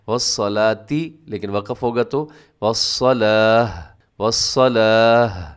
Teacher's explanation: صاد موٹا ہے، لام باریک ہے ، اور آگے تا، گول تا پر وقف کریں گے تو